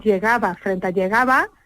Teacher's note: La que acaba en S es la que tiene la vocal más abierta y más larga también. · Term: apertura vocálica